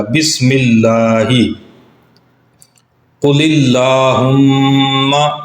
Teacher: بسم اللہ، قل اللہم، یہاں پر بھی لفظ اللہ کے لام سے پہلے لفظ قل ہے، اور قل کا جو آخری لام ہے اس کے نیچے زیر ہے، جس کی وجہ سے لفظ اللہ کے لام کو ہم باریک پڑھیں گے